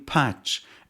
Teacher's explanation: The vowel in patch is produced with the front of the tongue in a low position and the lips spread.